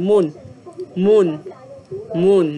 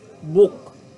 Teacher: the o o sound is either long as in moon or short as in Book